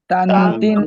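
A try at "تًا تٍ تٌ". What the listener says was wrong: আওয়াজটা নাকের মধ্যে নিতে হবে। তান তিন তুন।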